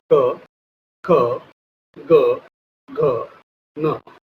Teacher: तो कंठ का उपयोग करके हम इन वर्णों का बोलेंगे। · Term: कंठव्य